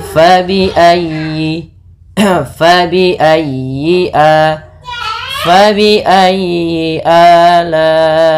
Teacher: dalam ayyi ditekan huruf ya-nya karena dia tasdid, dan huruf ya termasuk huruf lin yang lembut, di dalam pelafalannya jangan dihentakkan.